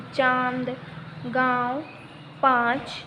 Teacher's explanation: अनुनासिक का उच्चारण नाक और गले दोनों से किया जाता है